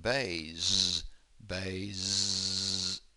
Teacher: Yes, there's vibration there. It says it's an S, but it's actually a Z. It's being vibrated. There is voicing there.